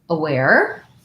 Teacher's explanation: check out your word here we have second syllable stress so my ar has the air diphthong